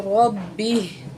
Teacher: یہاں را کے اوپر زبر ہے تو را کو موڑا کر کے پڑھیں گے اور با کو سختی سے پڑھیں گے کیونکہ اوپر تشدید ہے، ٹھیک ہے۔